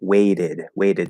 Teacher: Wait becomes weighted, and in American English, that T is going to turn into a flat D. Okay, so it's going to sound exactly the same, and the E again will be pronounced weighted, weighted.